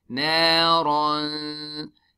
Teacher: We hide the sound of noon into our nose and stretch it harakatain. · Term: ikhfa